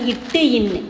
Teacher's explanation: இந்த 2 எழுத்துக்களும் நாவினுடைய நுனியையும் அன்னத்தினுடைய நுனியையும் தொட்ட மாதிரி பிறக்கும்